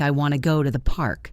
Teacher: The word to is reduced to tia. · the important words are want, go, and park. The words I to and thee are less important, so I say them very quickly.